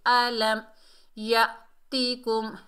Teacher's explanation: میم ساکن کو ظاہر کر کے پڑھیں گے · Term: اظہار شفوی